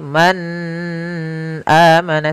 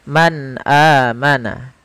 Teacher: suara nunnya harus jelas. Tidak boleh ditahan. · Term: izhar